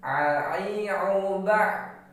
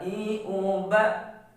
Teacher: Jadi nggak boleh mengarah pada makhraj huruf ain. Karena makhraj huruf ain di tengah tenggorokan, sedangkan alif atau hamzah di pangkal tenggorokan. Jadi harus jelas bedanya.